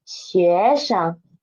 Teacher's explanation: Last one is 学生 Sheng is the neutral tone. And because 学 is second tone and Sheng is after it, so Sheng's pitch should be lower than 学